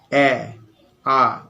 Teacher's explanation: এ জিভটা যেন নিচের দিকে লেগে যাচ্ছে। এ, আ অনেকটা নিচের দিকে। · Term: নিম্ন স্বরধ্বনি